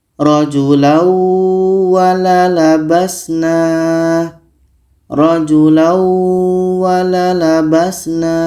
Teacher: Maka ini tanwin ini kita masukkan ke waw dan kita dengungkan. Kita baca rajulau wala labasna. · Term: idgham bi gunnah